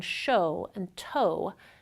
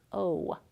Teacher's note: At the end of the [o] vowel the tongue moves up a little bit so we produce the vowel as [oʊ].